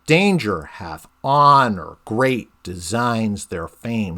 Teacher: then you get danger right you get this trochaic substitution where the first syllable in danger is emphasized and the second syllable is less emphasized